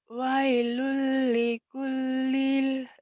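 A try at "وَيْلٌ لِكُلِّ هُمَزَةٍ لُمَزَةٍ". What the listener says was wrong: jangan lil.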